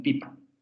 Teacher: Tenemos una vocal anterior cerrada, no labializada, en ejemplos como en pipa.